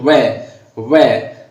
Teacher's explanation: व का उच्चारण हम बोलेंगे व, यानी दांत और ओष्ठ काम में लेंगे तो व यानी दांत और ओष्ठ, दांत और ओष्ठ यानी दंतोष्ठ, यानी इकट्ठे बोलेंगे इसको करके तो दंतोष्ठ, दंतोष्ठ।